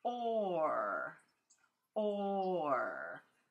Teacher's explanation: my mouth starts kind of with an O and that goes into an ER